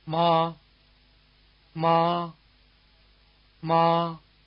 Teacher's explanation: other tone the first tone is called the high tone it's pitch is near the top of the speaker's range and its contours level as you can see in the display